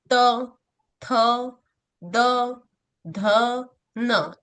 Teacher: त वर्ग इसको दंतय बोलते हैं क्योंकि इसे बोलते समय जीभ दांतों के बीच में आती है। त थ द ध न इसके लिए इसे दंतय बोला जाता है।